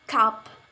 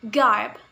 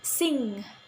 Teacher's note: the back part of the tongue touches the soft palate or velum. As sound ka in word cup, or as sound ga in word garb, and first sound in word sing.